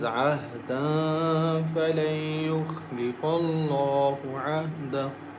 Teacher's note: Ahda, there is a noon tanween is followed by fa, and fa is one of the hide letters, one of the one of the ikhfa letters. So we recite with light nasal sound for two counts